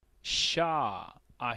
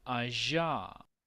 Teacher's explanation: se gesticulan con lo que vendría siendo la parte postalveolar ambos eso significa que la lengua tiene que estar ubicada atrás del alvéolo